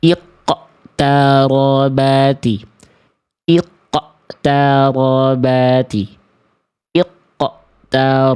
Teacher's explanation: bunyi pantulan di ujung pelafalan si kol-kolannya itu kayak ada hamzah ya, tertahan ya, kayak ada hentakan. Padahal tidak perlu ditahan-tahan ya, lepaskan saja biar ramai ya kol-kolahnya.